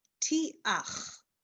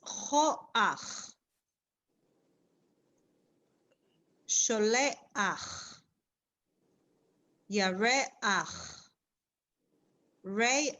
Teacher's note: And it is at the end of a word, not at the beginning, at the end of the word, we actually pronounce it as ach. We say the vowel first and then the letter, the sound of the letter, chet, ach.